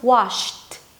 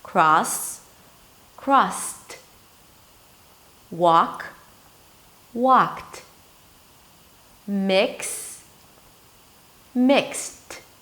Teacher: If it's a voiceless consonant, then it loses its voicing quality and it turns into a T. So the D turns into a T if it appears after a voiceless consonant. For example, wash, sh, sh, sh, voiceless, washed. · So if it's a voiced consonant, then it remains a voiced D. If it's a voiceless consonant, then it loses its voicing quality and it turns into a T. So the D turns into a T if it appears after a voiceless consonant.